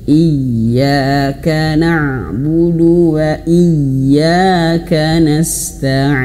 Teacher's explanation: Iya, iya itu satu ayun saja. Karena dua harakat itu satu ayun.